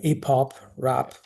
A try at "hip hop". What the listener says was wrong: Hip hop. So make sure you get the huh in there. Hip hop.